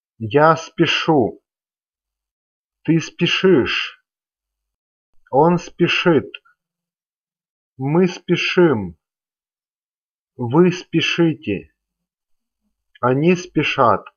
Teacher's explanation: the stem is unstressed, then the endings are stressed · Now, in blue endings here, we have sound E following a hard consonant sound sh, which is impossible in Russian pronunciation. Besides, sound sh is always hard and cannot be softened